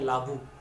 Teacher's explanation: প্রথমে অটাকে আমরা লোপ ঘটিয়ে দিই উচ্চারণের সুবিধার জন্য, তারপর থাকে লাবু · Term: আদি স্বরলোপ